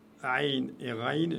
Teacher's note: Aïn et Raïn, c'est les lettres du cou, hein, de la gorge.